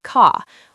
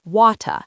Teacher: sometimes, they don't say the 'r' sound at the end of a word.